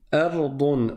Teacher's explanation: pour le dad, il va complètement s'agripper, se coller au palais.